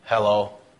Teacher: our flat intonation basically sends a message that we really are uninterested or not very concerned